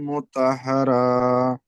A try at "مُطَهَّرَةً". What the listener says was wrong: মুতহহার, র হা জেবার র, কোনো টান হবে না। মুতহহার। মুতা নয়, তো জেবার তো, মুতহহার, মুখ গোল হবে, মুতহহার।